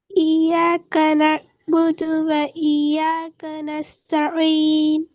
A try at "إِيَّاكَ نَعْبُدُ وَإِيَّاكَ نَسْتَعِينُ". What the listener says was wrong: நஸ்தாயின் எத்தனை செகண்ட் நீட்டணும்? இப்போ நீங்க 3 செகண்ட் நீட்டி ஓதுனீங்களா? ம் அப்போ சொன்னீங்க அப்படித்தான் ஓதினோம்ண்டு.